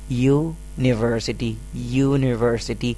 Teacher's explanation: تو آپ دیکھ سکتے ہیں یونیورسٹی کے اندر یعنی کہ یہ لفظ جو ہے وہ یو سے شروع ہو رہا ہے، جو کہ واؤل ہے. لیٹر تو واؤل ہے لیکن جو آواز ہے وہ واؤل نہیں ہے، وہ ہے یا